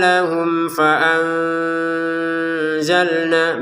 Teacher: mim sukun bertemu fa dengan jelas ya